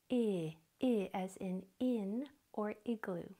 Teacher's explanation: the short sound for I is I your mouth is long long wide and narrow like a grin